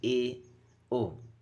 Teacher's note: तीसरा है अर्धसंवृत, half close. जिन स्वरों के उच्चारण में मुख द्वार आधा बंद रहता है, उसे अर्धसंवृत कहते हैं, जैसे कि ए, ओ।